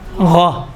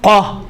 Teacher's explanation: غا میں تھوڑا سا نرمی ہے، قاف میں تو موٹائی زیادہ ہے، تھوڑا سختی ہے